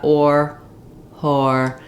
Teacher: basically I have a little bit of rounding. My tongue is tight and back, and unlike the sound, where my tongue doesn't move, it's a vowel, a monophthong vowel, no movement, just tight tongue against the teeth.